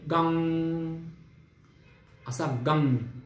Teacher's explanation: गण शब्दातील पहिला गकार, मग त्यामध्ये अकार मिसळला, त्यावरती अर्धचंद्राकार अनुस्वार आणि त्याचा तारस्वरामध्ये उच्चार म्हणजे गंग असा गंग.